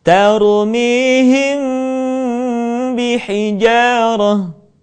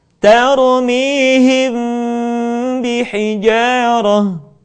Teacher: Mim mati ketika bertemu dengan huruf ba, bibir tidak sempurna rapat, melainkan agak direnggangkan sedikit.